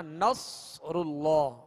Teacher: اللہ عز و جل کے لام سے پہلے زبر یا پیش ہو تو اللہ عز و جل کے لام کو پر یعنی موٹا پڑھیں گے، اور اللہ عز و جل کے لام سے پہلے زیر ہو تو باریک پڑھیں گے.